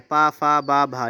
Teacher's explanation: आगे प्रश्न आपका दे रखा है, क्या कहा गया है कि ओष्ठ वर्ण कौन सा है? ओष्ठ मतलब जिसका उच्चारण स्थान होठों से होता हो, तो ये पा वर्ग होता है